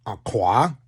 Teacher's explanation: I'm not using my voice. The K is voiceless.